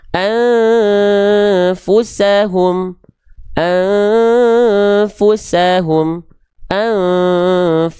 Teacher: Dibaca dengan menyamarkan bunyi an disertai dengung dua harakat. · Jadi udah enggak ada n-nya. An persiap-siap melafalkan huruf fanya. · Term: ikhfa